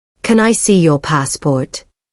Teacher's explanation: Notice how your voice rises a little at the end. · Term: English melody